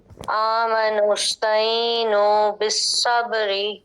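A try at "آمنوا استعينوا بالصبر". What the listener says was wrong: آمنوا استعینوا اور اینو حمزہ نہیں بنانا. آمنوا استعینوا بالصبر.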